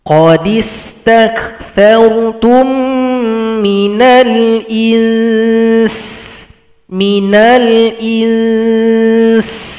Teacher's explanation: huruf nun sukun maka ada dengungan dengungkan dulu dua ketukan baru diberikan vokal huruf Sin qodistakartum Minal ins Minal ins berikan dulu ikhfa pada huruf nun